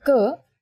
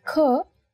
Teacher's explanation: In Hindi, when you say ka, there is no forceful expulsion of air. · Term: unaspirated